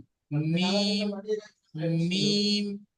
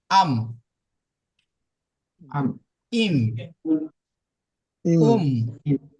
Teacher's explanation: মিম উচ্চারিত হয় দুই ঠোঁটের ভিজে অংশ হইতে